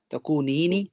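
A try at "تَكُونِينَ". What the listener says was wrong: नीनी नहीं, तकुनीनी नहीं, तकुनु तकुनीना, तकुनीनी नहीं,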